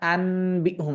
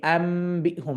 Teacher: এই নুনের উচ্চারণটা বদলে মিমের উচ্চারণে পৌঁছে গিয়েছে